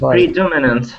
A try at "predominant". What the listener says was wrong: when you pronounce that word, it sounds more like an I. Predominant.